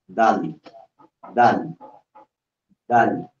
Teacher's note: yung dila mo nakadikit do sa taas sa may puno ng ngipin mo sa taas at hinila baba